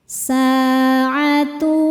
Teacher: Sebab ada alif sebelumnya berharakat fathah. Cara bacanya dipanjangkan dua harakat. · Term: mad thobi'i zohiri